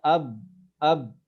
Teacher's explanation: Kita bisa merasakan bahwa huruf ba itu makhrajnya di asyafatan, di dua bibir.